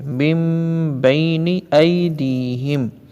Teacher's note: یہاں نون کو نہیں پڑھیں گے، کس کو پڑھیں گے؟ میم کو. من بینی نہیں کہیں گے، میم بینی ایدیہم.